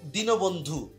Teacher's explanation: আশা করি এখানে দীর্ঘিকারটা যেহেতু দীর্ঘিকার রয়েছে, দীর্ঘিকারটা এখানে কিন্তু উচ্চারণে রস্বীকারই হবে।